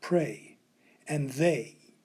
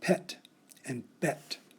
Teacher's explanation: when we make this long a sound we open the back of the mouth wide and a little bit to the side if we make this same sound without doing this we end up with the short e sound